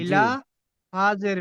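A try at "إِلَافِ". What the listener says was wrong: হামজার টানটা ছেড়ে গেছে। ইলাফি। হামজার নিচে খাড়া জের এসেছে, খাড়া জেরটি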